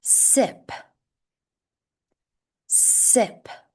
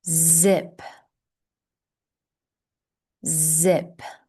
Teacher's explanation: The only difference between S and Z is Z is a voiced sound. So, we're going to engage our vocal cords. · So we're going to engage our vocal cords. It will be similar to saying the letter S, but adding a hum.